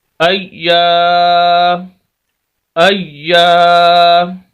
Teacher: اب یہ حمزہ ہے، حمزہ زبر یا، اج، یا زبر الف یا، ایا، ایا، یا کے آگے الف ہے، اس وجہ سے ہم یا کو لمبا کر رہے ہیں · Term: الف مدہ